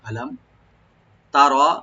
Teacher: মিম সাকিন এখানে জাহার করবো আমরা